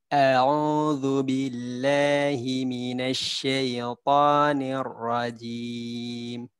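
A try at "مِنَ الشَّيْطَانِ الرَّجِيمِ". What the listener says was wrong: Niornya hati-hati. Nior. Jangan nior.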